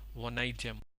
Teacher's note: So this nay is taking the primary stress on it.